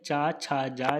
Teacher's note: च, छ, ज स्पर्श संघर्षी हैं।